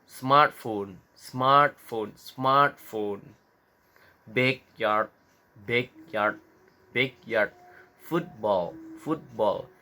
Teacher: Penekanannya ada di suku kata the first syllables.